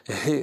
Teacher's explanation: La lettre He a une particularité. Je ne fais intervenir rien du tout. Ni les dents, ni la langue, ni le palais. Il s'agit simplement de souffler. He, c'est une expiration.